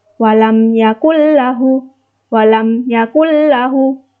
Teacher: bertemu dengan RAM yang merupakan salah satu huruf dari Idgham bilagunnah maka membacanya harus memasukkan tanpa mendengung